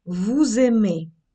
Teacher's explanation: зв'язування, коли німий с починає читатися як дзвінкий з